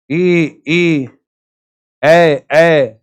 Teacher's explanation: अग्र जो मुख के अगले भाग से उच्चारित होते हैं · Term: अग्र स्वर